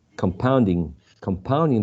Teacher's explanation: using this ing as a verb there's a high probability that the stress should be placed in the second syllable not in the first one